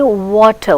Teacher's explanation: voiced, it is voiced, bilabial, semi-vowel.